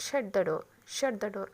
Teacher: Falling intonation, ద pitch of ద voice falls from A fairly high pitch టు లో pitch. Example, షట్ ద డోర్ అంటే high pitch టు లో voice.